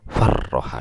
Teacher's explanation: Bahasa Arab juga yang dengan stres ada, misalnya faroha artinya senang, tapi kalau farroha distreskan, rohnya ditekan